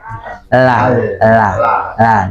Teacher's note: kita pengucapan huruf lam awalnya kan ujung lidah saja ya